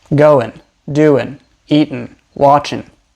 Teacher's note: when there is an NG sound at the end of a word we often just pronounce it with an n Sound